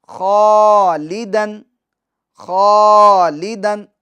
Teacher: خا کو پور کریں گے، اور خا کے ساتھ جو الف ہیں اس کو بھی پور پڑھیں گے